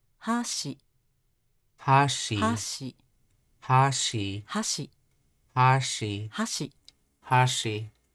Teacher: That's a atamadaka, or high and then low.